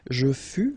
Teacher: keep in mind that final S is not pronounced